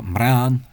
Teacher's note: any consonant that isn't s, followed by an n, the n becomes an r, or actually originally a nasalized r. A nasalized r, that'll do.